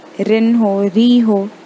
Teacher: अगर कसरा है तो री पतला पढ़ेंगे